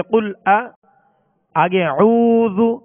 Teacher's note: قل قاف لام پیش قل، اس کو کل باریک نہیں پڑھیں گے بلکہ پر پڑھیں گے، موٹا پڑھیں گے. اسی طرح اعوذ حمزہ پر زبر ہے، حمزہ کو دراز نہیں کریں گے